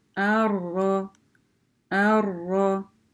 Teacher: Значит, мы читаем ра в удвоении. Если мы начинаем, да, то мы говорим а, хамзатуль васль, и ра удваиваем.